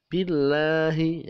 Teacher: Lam jalalah dibaca billahi, dibaca tipis karena lafaz Allah jatuh setelah kasroh. Setelah kasroh membacanya tidak billahi, tapi membacanya billahi. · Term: tarkik